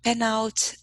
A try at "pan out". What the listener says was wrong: Oh, pan. So it's a pronunciation. Pan out. This is the ah sound that you have in English. Pan. So it's the difference between eh and ah. Pen, pan.